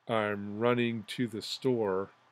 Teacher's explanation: I'm would be unstressed run would be stressed in would be unstressed